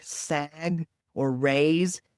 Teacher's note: they have that voiced consonant at the end of the word, which makes it a little harder for kids to produce